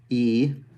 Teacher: This is high front E. It's not a diphthong. It's just longer than the Spanish E. E, and it's a little bit tighter.